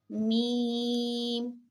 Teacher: ہونٹوں کے خشک حصے جو ہوتے ہیں، جو مطلب گیلے نہیں ہوتے، بالکل خشک ہوتے ہیں، ان دونوں کو ملانے سے جو ہے وہ میم ادا ہوگا